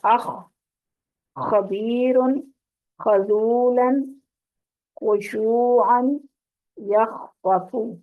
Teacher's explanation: اور خا جو ہے وہ گلے کی خراش کے ساتھ ادا ہوتا ہے